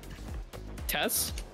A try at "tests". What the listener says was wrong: You're just saying Tess. That's a woman's name. You're not saying tests. You're saying tests.